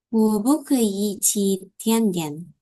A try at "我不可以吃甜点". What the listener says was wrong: Benar, bukan ci ya. 吃，吃, ini giginya ditutup. 吃, ho, 吃, 吃, giginya nutup. 吃 bukan ci tapi 吃.